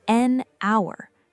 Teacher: Hour begins with a vowel sound because the H is silent.